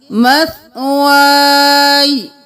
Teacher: ہم زبر کو گرا دیں گے، یا کو ساکن کر دیں گے. مثوائی.